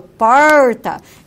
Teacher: esse R ele é coronal, porque a ponta da língua ele é elevado